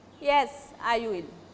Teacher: My reply will be with a falling voice.